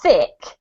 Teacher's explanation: when I say thick I'm blowing lots of air through to get that sound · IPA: /θ/